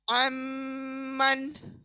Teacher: नून छूट जाएगा वहीं पर और मीम को नाक में लेके जाएंगे। अमन, अमन, यानी मुंह में मीम को थोड़ी 1 सेकंड के लिए रोक लें आवाज को, तब होगा। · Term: इदगाम